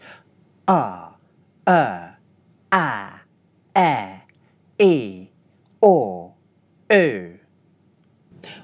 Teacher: First you squeeze your glottis closed; then you open it with a strong breath. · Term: glottal stop